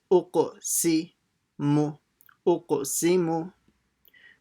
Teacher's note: Sin with the kasra, si, uq, si. Making sure you try to say a bouncing sound on the qaf and say the q sound. So it's not uk, it's uq, si, mu, uq, si, mu.